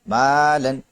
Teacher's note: میم الف زبر ما، لام دو زبر لن، مالن، یہاں پر الف باریک ہوگا کیونکہ اس سے پہلے میم بھی باریک حرف ہے